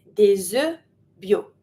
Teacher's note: I do my link because E starts with a vowel, so des œufs, but because it's plural, I don't pronounce the F and the S.